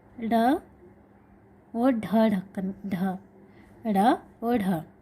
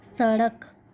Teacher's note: ऐसे व्यंजन वर्ण जिनके उच्चारण में जीभ मूर्धा को स्पर्श करके झटके से नीचे आती है। जो जीभ रहती है, जिह्वा, वह मूर्धा को स्पर्श करके झटके से बाहर आती है, उन्हें द्विगुणी व्यंजन या उत्क्षिप्त व्यंजन कहा गया है।